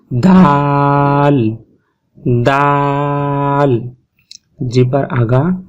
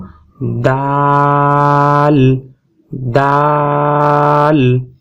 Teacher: দালের মাখরাজে গেলে আমরা দেখব জিহ্বার আগা উপরের দাঁতের গোড়ার সাথে লাগিয়ে উচ্চারণ হবে দাল